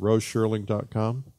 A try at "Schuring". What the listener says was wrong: Yeah, without the L. I hear you pronounce an L somewhere.